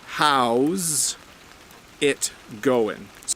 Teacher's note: you can hear that s becomes a zed